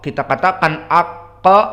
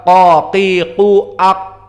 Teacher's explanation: Kita katakan aq, ada ke-nya karena qalqalah